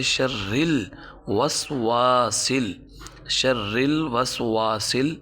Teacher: واو کے بعد سین ہے، سیٹی نکال کر پڑھیں گے کیونکہ سین سیٹی والے حروف میں سے